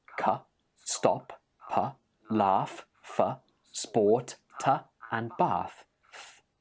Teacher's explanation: K, p, f, t, and th are all unvoiced consonants.